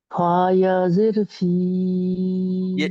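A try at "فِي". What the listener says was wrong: ইয়াজের নেই, ফা খালাজের।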